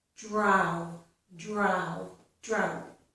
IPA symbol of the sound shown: ɑʊ